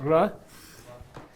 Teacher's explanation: It's a trilling of the tongue against the palate toward back, farther back than a ra.